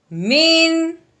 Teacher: نون ساکن کے بعد حروف ہلکی میں سے کوئی حرف آ جائے تو پھر نون ساکن کو اظہار کے ساتھ پڑھتے ہیں، کوئی غنہ وغیرہ نہیں کرتے